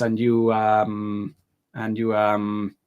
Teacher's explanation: when you're stopping to think about what you want to say your intonation goes up